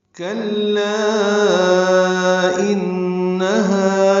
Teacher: اگر ہم وقف نہ کریں تو مد منفصل پڑھیں گے، 4 حرکات لام کو لمبا کریں گے